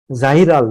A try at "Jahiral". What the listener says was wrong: Jahiral, it's J, Jahiral.